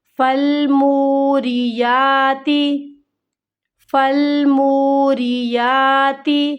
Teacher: میم واو پیش منہ حروف مد ہے، اسے ہمیں کھینچنا ہے ایک الف کی مقدار کے برابر۔